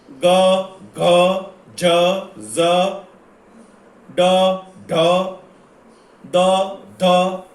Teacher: નાદતંત્રી સહેજ વધુ કંપવાની અવસ્થામાં હોય ત્યારે જે ધ્વનિ ઉત્પન્ન થાય તે ઘોષ ધ્વનિ છે. દાખલા તરીકે ગ, ઘ, જ, ઝ, ડ, ઢ, દ, ધ વગેરે.